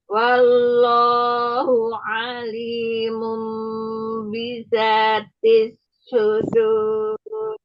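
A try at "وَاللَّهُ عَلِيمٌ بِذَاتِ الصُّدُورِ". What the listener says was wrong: Ya, tebelin huruf sodnya sama ro yang di akhirnya juga tebal. Wallahu alimum bidzatil sudur. Ro-nya tebal.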